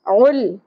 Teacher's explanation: لام ساکن قلقلہ نہیں کرنا